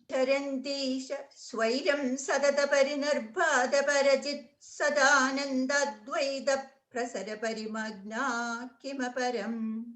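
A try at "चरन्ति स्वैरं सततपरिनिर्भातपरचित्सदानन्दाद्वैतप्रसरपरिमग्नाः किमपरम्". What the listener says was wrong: after Swairam, we put a pause. no, just only after Swairam. Charantisha Swairam.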